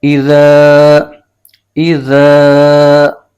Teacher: الف سے پہلے زبر آ جائے تو الف مدہ بن جاتا ہے، تو یہ الف مدہ ہو گیا ہے، اس کو ایک الف کھینچ کے پڑھیں گے